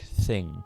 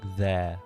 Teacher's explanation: you have words like thing, which are more lispy and kind of softer, but then you have other words like there, which are slightly harder and more zeddy. So usually you'd use the DH for that one.